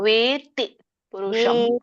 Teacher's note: ವೇ ಎಳಿಬೇಕು ಆಮೇಲೆ ತ ಒತ್ತಿ ಹೇಳಬೇಕು